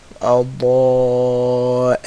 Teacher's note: The sides of the tongue, the back sides of the tongue, hitting the gums of the top side teeth, the molars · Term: ضاد